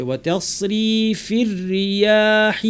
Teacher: তাস ওয়া তাসরিফির, এখানে রয়ের উপর তাসদিদের সাথে জের থাকায় র পুরোটাই পাতলা হবে। রয়ের প্রথম অংশ এবং দ্বিতীয় অংশ পুরো অংশটাই কিন্তু পাতলা হবে।